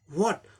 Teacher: American में बोलना होगा तो स्ट्रॉन्ग फॉर्म में वॉट, वो और ह दोनों साउंड रहता है वॉट. और वीक फॉर्म वैसे ही होता है ब्रिटिश जैसे ही, वॉट, सिर्फ W.